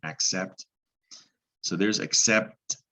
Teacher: c makes a k then an s sound which pretty much is an x sound